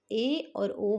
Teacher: ए और ओ में हमारा आधा ही मुंह बंद होगा, पूरा नहीं होगा। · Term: अर्ध समृद्ध